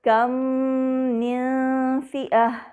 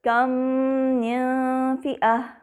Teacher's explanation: میم ساکنہ کے بعد میم متحرکہ ہے، لہٰذا ان دونوں میں ادغام کامل الشفوی مثلین الصغیر مع الغنہ ہو رہا ہے